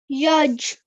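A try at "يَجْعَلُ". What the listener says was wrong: Good. There's a slight jerk there.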